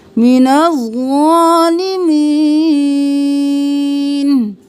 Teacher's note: ज़ा मोटा और एक अलिफ के बराबर खींचेंगे, नून को ज़ा के साथ मिलाएंगे, अलिफ लाम खाली है, इनको नहीं पढ़ेंगे।